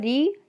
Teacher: मूर्धन्य से उच्चारण होता है ऋ ट वर्ग और श का